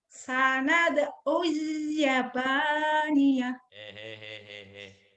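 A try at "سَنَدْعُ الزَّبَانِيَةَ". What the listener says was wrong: Sanad'u zaba. Bukan Yabaniyah, zaba, z. Sanad'u zabaniyah. Sanad'u zabaniyah.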